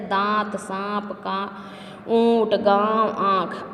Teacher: जिन वर्णों को बोलते समय मुख और नाक दोनों से ध्वनि निकलती है उन्हें अनुनासिक कहा जाता है। इसका प्रयोग वर्णों के ऊपर चंद्र बिंदु के रूप में किया जाता है, जैसे दांत, सांप का, ऊंट, गांव, आँख आदि।